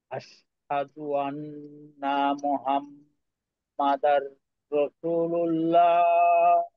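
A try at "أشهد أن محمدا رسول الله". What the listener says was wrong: আচ্ছা, এইখানে কিন্তু একটা টান হবে, রসুলুল্লাহ, রসুলুল্লাহ। আর শেষে তো মোটা আল্লাহ শব্দ, রসুলুল্লাহ, ল।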